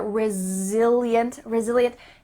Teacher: There's a lovely Z sounds in there.